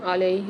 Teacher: لام کے ساتھ یا مد آ رہی ہے، تو یہاں پر بھی لام کو 1 الف کی مقدار کھینچ کے پڑھیں گے۔